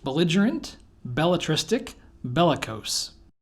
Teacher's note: you could say that bellatristic doesn't belong because the penultimate syllable has the primary stress while the other words are stressed on their anti-penultimate syllables